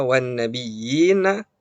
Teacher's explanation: Tetapi kalau kita bacanya wasol atau sambung, maka wan nabiyyina itu hanya dibaca 2 harokat seperti halnya mad tabi'i. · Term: mad tamkin